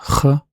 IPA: χ